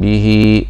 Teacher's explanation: به في هنا صله صغرى، الياء الصغيره اللي شايفينها بعد الهاء المكسوره دي صله صغرى، يعامل معامله المد الطبيعي برضو بنمده حركتين